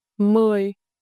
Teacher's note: This you a gentle falling tone. Start your voice at the medium level and let it drift down slowly like a sign.